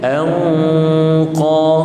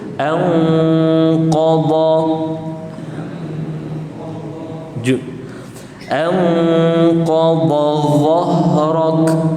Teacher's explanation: apabila ikhfa bertemu dengan huruf tebal, kena tebalkan juga dengung dia. Jadi bunyi dia anqa. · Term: ikhfa yang tebal